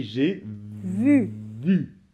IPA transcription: ʒe vy